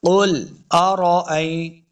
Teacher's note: لام کو جنبش نہیں دینی، یعنی قلقلہ نہیں کرنا، لام کو ساکن ہی رکھنا ہے